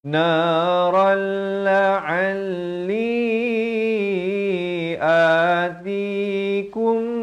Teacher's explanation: Asalnya ra tanwin di atas bunyi naran. Naran. Tapi datang lam jadi masuk tanpa dengung. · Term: idgham bila gunnah